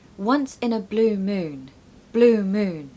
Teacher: make sure to stress blue and moon okay once in a blue moon Blue Moon it's quite a bit louder